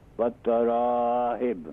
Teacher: تا جو ہے ڈبل لیٹر ڈبل ساؤنڈ ہے، اس پر حرف مشدد ہے